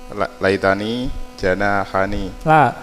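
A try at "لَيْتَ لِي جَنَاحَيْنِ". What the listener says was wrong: Li lamnya kok lamnya antum hilang kan kalau begitu ya. Kan ini li udah li. Li janahani. Li janahani.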